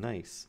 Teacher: Airflow is being stopped in your mouth, but the air is actually going through your nose to escape. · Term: nasals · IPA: [n]